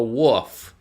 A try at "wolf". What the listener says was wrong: Did you say wolf? wolf. There's an L in there. Wolf. I swear to God, you said wolf.